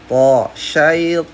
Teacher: Th itu adalah ta yang ditebalkan. Cara menebalkannya adalah lidah belakang yang naik.